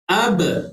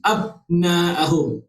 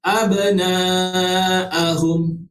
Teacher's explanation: Kita tak boleh nak rapatkan bibir mulut kita selepas kita sebut huruf ba yang mati. Abna'ahum. Dia mesti ada ekor dia. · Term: qalqalah